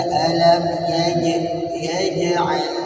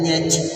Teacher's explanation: Jangan berangin, karena sebaliknya kalau ta dan ka huruf hamas ketika diucapkan harus berdesis, jim huruf jaga lawannya ketika diucapkan tidak boleh berdesis, tidak boleh berangin. Maka kita baca alam yaj'al, jangan yaj.